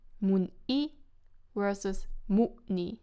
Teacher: you see very clearly that the diphthong is at different places, but also the stress is different. So mun-i is stressed on the last syllable, mun-i, mun-i, but mu-ni is stressed on the first syllable, mu-ni, mu-ni, mu-ni.